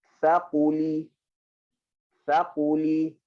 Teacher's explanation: Pangkal lidah, tekan ke langit-langit atas. Dan kemudian lam, hujung lidah ke langit-langit atas.